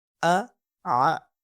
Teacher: اب حمزہ جو ہے ہمارے پاس وہ ہمارے پاس باٹم آف دا تھروٹ سے ادا ہوتا ہے، یعنی کہ ہمارے پاس اقصی حلق سے، اور عین جو ہے ہمارے پاس ادا ہوتا ہے مڈل آف تھروٹ یعنی کہ وسط حلق سے۔ تو یہ ان کے اندر ڈفرینس ہے، اگر ہم ان کو اپنی اسپیسیفک جگہ سے ادا کریں گے تو اسے یہ ادا ہوں گے آ آ۔